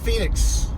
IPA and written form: ˈfiːnɪks (Phoenix)